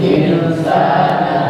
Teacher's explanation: Maka cara membacanya adalah disamarkan dan didengungkan. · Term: ikhfa